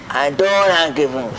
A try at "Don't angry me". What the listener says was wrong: Don't angry me, you have to say in an anger tone, not a smiling.